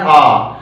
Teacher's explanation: जब आप बोलते हैं आ, तो उसमें पूरा मुख खुलता है। इसके अलावा किसी भी स्वर में पूरा मुख नहीं खुलता है। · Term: विव्रत